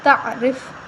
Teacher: را کے نیچے زیر ہے تو ہم را کو باریک پڑھیں گے